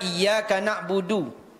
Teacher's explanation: huruf Dal ujung lidah ya pangkal gigi